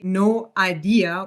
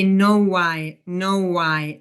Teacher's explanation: we insert a w sound when there's a oo or o and as you can see the no ends in a diff tongue o no so we insert the w we don't say no idea Which again would sound very choppy. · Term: vowel link